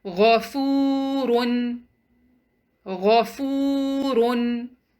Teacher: Yes, there's a waw, and the waw has sukoon, and it is preceded by a dhamma, which is a matching haraka. So we'll prolong letter fa for 2 counts.